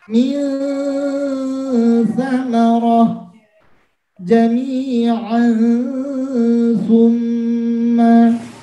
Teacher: Kemudian nun bertemu dengan sa. Sa itu makhrajnya di mana? Ujung lidah dengan gigi atas. Maka mulut kita sudah menyamarkan huruf sa dulu, bersiap-siap antara jelas dengan tidak. · posisi kita sudah di makhrajnya sa, kemudian disertai dengan dengung, baru setelah sempurna dengungnya baru dilepas huruf aslinya. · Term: ikhfa